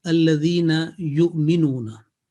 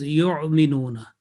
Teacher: some will pronounce this Hamza not from the bottom of throat, but from the middle of throat